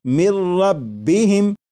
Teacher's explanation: نون ساکن کی آواز نہیں آئے گی، بلکہ میم کے بعد را کی آواز آئے گی، اور یہاں پر غنہ نہیں کریں گے اور اسے پڑھیں گے مر ربہم۔ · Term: ادغام